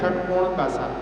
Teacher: एक होता है मूर्धन्य सा, जब अपनी जीभ की टिप ऊपर लगती है तब उसका उच्चारण होता है